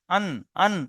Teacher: জিভের আগা তার বরাবর উপরের তালুতে লেগে উচ্চারণ হয়। · এটার সম্পর্ক জিভের আগার সাথে, জিভের আগাটা উপরের তালুতে টক্কর লাগবে, একদম সোজাসুজি। আন, আন, আপনি দেখেন আপনার জিভের আগাটা উপরের তালুতে লেগে যাচ্ছে। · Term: নুনের মাখরাজ